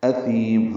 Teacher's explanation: معتدن تنوین کے بعد حمزہ آنے کی وجہ سے اظہار حلقی ہے. اثیم حمزہ اقصی حلق سے بالجہر ادا ہوگا. ثا نرمی سے پڑھیں گے، لمبا کریں گے.